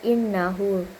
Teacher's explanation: Karena nun bertasydid ee dan cara bacaannya itu ditahan dan didengungkan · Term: idgham maal gunah